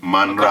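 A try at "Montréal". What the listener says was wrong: You say Monreal in French or Haitian Creole, they don't pronounce the T.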